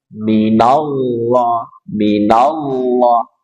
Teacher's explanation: ada lafaz jalalah Allah sebelumnya fathah, maka lamnya dibaca tafkhim tebal.